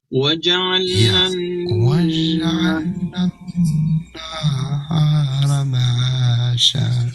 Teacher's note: Nunnya ditahan 2 harokat, agak dilamakan.